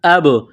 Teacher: یہاں با ساکن ہے، قلقلہ کریں گے